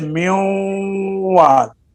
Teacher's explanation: वाव और या में जब इदगाम करेंगे तो इदगाम में नून का गुन्ना एक अलिफ की मिकदार में बाकी रह जाएगा